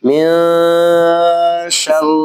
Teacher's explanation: من شر را کو موٹا نہیں پڑھیں گے